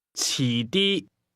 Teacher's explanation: Now and later are both pronounced with the same combination of mid-falling and high-level tones.